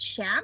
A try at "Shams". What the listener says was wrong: Shams. No one really wants to be called a sham.